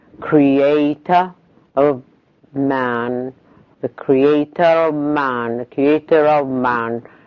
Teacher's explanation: if you pronounce it alone it ends in a schwa, but the R appeared in order to link the two schwas together